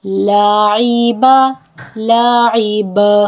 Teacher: با جو کہ حروف قلقلہ میں سے ہے اسی لیے اس کو میں نے وقف پہ ہلایا ہے, آواز کو لوٹایا ہے.